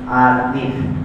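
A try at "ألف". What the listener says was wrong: হ্যাঁ, কোনো টান নাই, কাজে আলিফ তোমার টান হয়ে যাচ্ছে তো লামে। হ্যাঁ, আলিফ, আলিফ, আলিফ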